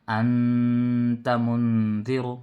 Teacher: 1 الف کے برابر آواز ناک میں رکے گی، اس کا نام ہے اخفا